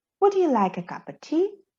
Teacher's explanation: we emphasize would like cup tea